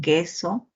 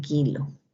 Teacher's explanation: tenemos el oclusivo velar sordo, que es representado por la letra C